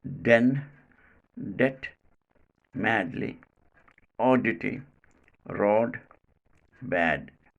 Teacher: Next, fourth plosive, d. Place of articulation, teeth ridge, alveolar ridge. Manner of articulation, plosive. Quality, voiced. This sound is called alveolar voiced plosive